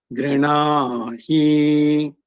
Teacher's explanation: See, all in the lower tone only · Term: anudatta